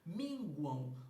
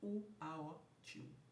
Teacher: Logo, se eu penso em esse AM como aotil, eu tenho junto com o U, que foi pronunciado anteriormente, um tritongo. Só que um tritongo formado por uma vogal U e um ditongo fonético